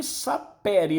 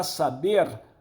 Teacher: O P se transforma em B, PB. O P é um fonema surdo. O B é um fonema sonoro. A isso se dá o nome de sonorização.